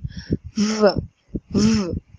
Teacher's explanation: طبعا الصوت ده لو حطينا ايدينا على الحنجره هنحس باهتزاز رهيب في الاحبال الصوتيه واضح جدا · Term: v sound